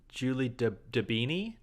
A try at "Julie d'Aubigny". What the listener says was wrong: Dobini. Because it's French, you say it kind of Dobini. AU is an O sound, but it's not O.